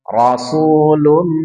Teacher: Idgham bi gunnah. Tahan 2-3 harokat, langsung leburkan tanwin, langsung masuk ke mim.